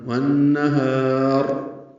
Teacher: والنہار میں نون مشدد پہ غنہ ہے، ہا کو لمبا کریں گے ، را پر پڑھیں گے وقفاً، والنہار علم ان لن تحصوه